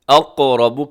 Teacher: قاف قلقلہ بھی ہے، قاف موٹا بھی ہے، اور را بھی موٹا پڑھا جائے گا کیونکہ را کے اوپر حرکت ہے، اسے اقرب نہیں پڑھنا، اقرب بلکہ اقرب، منہ بھر کے موٹا کر کے پڑھیے گا، اقرب منہم للایمان۔